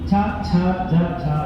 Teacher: ವರ್ಗ ಅಷ್ಟೇ ಎರಡನೇ ವರ್ಗ ನೋಡಿ ನೀವು ಅದನ್ನ ತಾಳವ್ಯಗಳು ಅಂತ ಹೇಳ್ತೀವಿ ಅಂದ್ರೆ ನಿಮ್ಮ ನಾಲಿಗೆನ ಪೆಲೆಟ್ ಗೆ ಮೇಲಿರುವಂತಹ ಬಾಯಲ್ಲಿ ಇರುವಂತಹ ಮೇಲಿನ ಭಾಗಕ್ಕೆ ಟಚ್ ಮಾಡುವುದರ ಮೂಲಕ ಈ ಶಬ್ದಗಳು ಉತ್ಪತ್ತಿಯಾಗುತ್ತವೆ